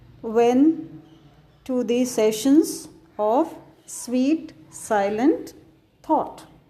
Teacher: As I told you yesterday, iambic pentameter means that each line contains 5 sets of 2 beats known as metrical feet. The first is unstressed and the second is stressed.